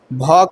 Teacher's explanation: भ का उच्चारण स्थान ओष्ठ है।